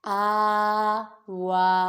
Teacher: حمزہ کھرا زبر آ، واو کھرا زبر وا، آ وا، حمزہ کھری حرکات، واو کھری حرکات، ان دونوں کو ایک الف یعنی 2 حرکات کے برابر کھینچ کر پڑھیں گے